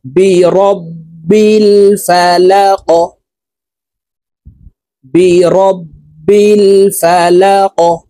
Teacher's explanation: এই কফকে ওয়াকফের ক্ষেত্রে সাকিন করে ফেলবো। কফ যেহেতু কলকলার হরফ, উপরের দিকে ধাবিত করে ধাক্কা দিয়ে উচ্চারণ করে সাকিন করব